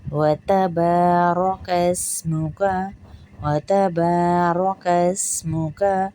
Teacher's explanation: وَتَبَارَكَ اسْمُكَ، را کو موٹا کرتے ہی کاف کو پتلا کر کے سین سے ملائیں گے اور سین میں سیٹی کی آواز آئے گی۔ وَتَبَارَكَ اسْمُكَ، وَتَبَارَكَ اسْمُكَ، فرق کو دیکھیے گا۔